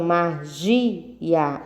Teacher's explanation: São 3 sílabas, magia. Então, a sílaba mais forte é o gia